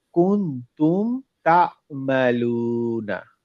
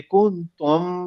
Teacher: এখানে কোন গুন্না হবে না মিমের উচ্চারণটা ক্লিয়ার উচ্চারণ করুক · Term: ক্লিয়ার সাউন্ড